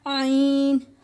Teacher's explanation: عین حلق کے بیچ سے ادا ہوتا ہے